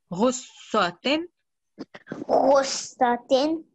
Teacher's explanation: Just remember when you join letter ghain with swad, you need to make sure, because there are two swads, you need to hold the sound there. You need to press down on the sound. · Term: shadda